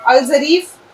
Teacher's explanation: اسی طرح سے یہ ہے الظریف، لکھا ہوا ہے الف لام ہے یہ سیدھے سیدھے، اور زوئے رے یہ اور فے الظریف، لیکن چونکہ اب آپ کو میں نے بتا دیا لام لکھنے میں آ رہا ہے، بولنے میں اس کا کوئی رول نہیں ہے، تو سیدھے جو ہے الف یہاں آ گیا زوئے پہ، از ہو گیا، اور چونکہ زوئے پہ ہم نے تشدید لگا دی تو یہ ظریف ہو گیا الظریف۔